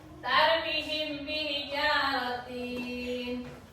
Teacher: Cara membaca ikhfa safawi yaitu dengan suara yang samar antara mim dan ba pada bibir. Kemudian ditahan kira-kira 2 harakat ketukan seraya mengeluarkan suara ikhfa dari pangkal hidung.